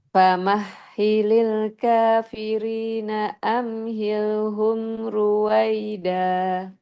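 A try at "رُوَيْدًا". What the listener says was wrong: Tapi itu ru-nya kurang tebal.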